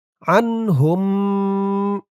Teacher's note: এই হা দিয়ে এই মিমকে না ধরে এই তাসতিদওয়ালা মিমকে ধরবে এখানে মিম সাকিনে ইদগাম গুন্না হবে